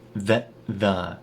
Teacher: the T at the end of that turns into a glottal stop and we reduce the vowel in that it turns into the